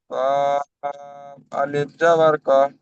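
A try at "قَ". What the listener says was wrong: না কফ আলিফ নেই তো, কফ জাবার ক।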